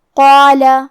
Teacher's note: قاف حروف التفخیم میں سے بھی ہے، تو ہم یہ حرف کو موٹی آواز میں پڑھیں گے۔ قاف کے بعد مد الف ہے، اور مد الف اپنے پیچھے والے حرف کا حکم لیتا ہے تفخیم میں اور ترقیق میں، لہذا ہمیں مد الف کو بھی بھاری آواز میں ادا کرنا ہے۔